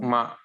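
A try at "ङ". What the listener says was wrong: No, no, no. Now you are using lips. Ma. It's not. Just stick your tongue to the same place when you were pronouncing K, K, G.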